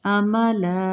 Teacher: لام 2 زبر کو ہم جب وقف کی صورت میں جیسے آیت مکمل ہو رہی ہے، املا تو الف مدہ کا قاعدہ بن جائے گا، 2 زبر کی بجائے 1 زبر پڑھیں گے، مد عارض کریں گے، کھینچ کے پڑھیں گے